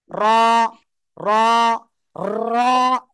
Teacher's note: জিহ্বার আগার পিঠ, তার বরাবর উপরে তালুর সাথে লাগাবো, লাগিয়ে উচ্চারণ করব।